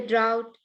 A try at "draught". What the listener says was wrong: That's pronounced draught rather than drought. It's draught. it's a measure of wine.